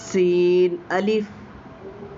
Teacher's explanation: سب سے پہلے آپ دیکھیں گے کہ لکھا ہوا ہے الف، لام الف، لام الف، با الف، نون الف، تا الف، یا الف، ثا الف، شین الف، سین الف۔ یہ جو ہے اس حرف کو ہم سیٹی سے ادا کریں گے، یعنی یہ حروف صفیریہ میں سے ہے، یعنی یہ سیٹی والا حروف ہے